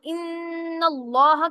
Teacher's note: نون مشدد ہوگا جس کے اوپر غنہ ہوگا